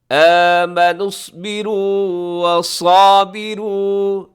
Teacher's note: اس میں صاد موٹا رکھیے گا. آمنوا اصبروا وصابروا، صابروا یہاں بھی حرف صاد سے موٹا رکھیے گا، ساتھ الف ہے وہ بھی موٹی تازی ہو جائے گی حرف صاد کی وجہ سے.